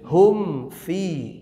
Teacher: Hum fi rapat dulu baru direnggang. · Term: izhar